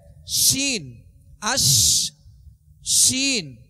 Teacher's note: تفشی کا معنی ہوتا ہے منہ میں آواز کو پھیلا دینا، تفشی کا معنی ہے پھیلنا۔ تو جب شین کو ادا کریں گے تو آواز منہ میں پھیل جائے